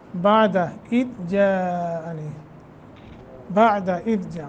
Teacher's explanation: جا مد متصل ہے لمبا کریں گے